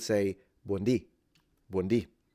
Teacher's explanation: so she's stressing the beginning but we stress the end